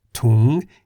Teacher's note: Tung in the rising tone meaning bag